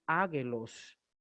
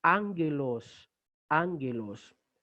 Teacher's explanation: la gamma que está delante de otra gamma se comporta como una nasal y por eso se lee ángelos y no águelo.